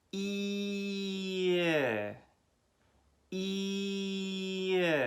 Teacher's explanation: feel your tongue slightly relax as you go from the tight E to the relaxed I